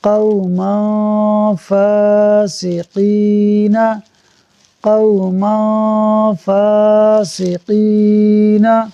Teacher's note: میم کے اوپر 2 زبر کی تنوین کے بعد فا حروف اخفاء میں سے ہے، لہٰذا اخفاء ہوگا، یعنی تنوین میں غنہ ہوگا